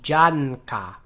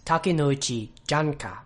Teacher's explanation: So if you really wanted to be really good at your pronunciation, you could be sure to pronounce the n sound as receiving its own beat